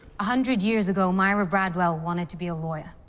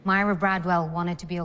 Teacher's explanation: Ruth Bader Ginsburg's native Brooklyn accent is consistently non-rhotic.